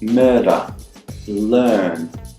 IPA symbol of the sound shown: ɜ